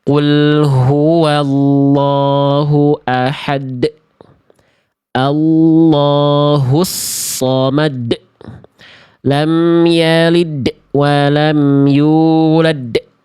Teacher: Huruf-huruf yang bertemu dengan hamzah sukun itu kan terhenti, syiddah. Nah, jangan sampai teman-teman seolah menambah hamzah sukun di pelafalan qalqalah teman-teman.